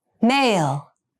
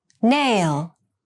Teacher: Male has the bilabial sound, and nail has the alveolar sound.